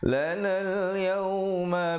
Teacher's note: itu alif lam qamariyah, jelaskan bunyi lamnya.